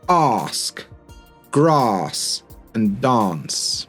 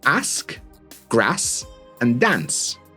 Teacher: in the north where I'm from or even you know Manchester, Newcastle, blah blah blah, we tend to use the shorter a vowel and these become ask grass and dance.